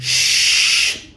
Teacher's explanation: the sh sound is a voiceless sound. And this voiceless sound comes from an area that we call the post-alveolar area. And this post-alveolar area is actually between the alveolar ridge and the palate.